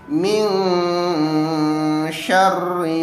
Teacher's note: hijaiyah yang 15 yakni tas azasya voodo pongoh khooka maka dia dibaca dengan samar-samar panjangnya dua ketukan